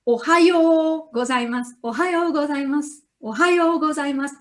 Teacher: The first O is short, ohayo, yo is long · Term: long vowels